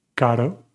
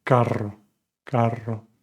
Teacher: When it's just one R, unless it's at the beginning of the word, it's a soft R, like caro. And when it's in the middle of the word with two R's, it's a hard R, carro, carro.